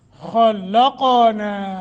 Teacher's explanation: خا کو موٹا لام کو باریک قاف موٹا قلقلہ بھی کریں گے